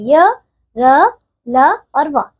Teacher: जिन व्यंजनों के उच्चारण करते समय जीभ मुख के विभिन्न भागों को पूरी तरह से स्पर्श नहीं करती, उन्हें अंतःस्थ व्यंजन कहते हैं